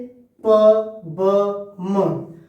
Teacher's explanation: दोनों होठों को एक साथ रखकर ध्वनि बनती है